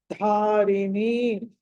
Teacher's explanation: ధ అన్నది మాత్రమే మహాప్రాణం